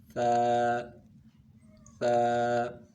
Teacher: ثا کا مخرج ہے زبان کی نوک اور ثنایا علیہ کا کنارہ